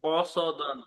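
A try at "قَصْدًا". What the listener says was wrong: টান হবে কেন কসদান কসদান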